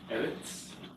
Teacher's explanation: You got the accent on the first syllable, right?